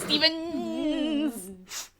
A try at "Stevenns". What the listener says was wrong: The name is spelled Stevenns, but it's not properly pronounced if you don't pronounce both ends, which is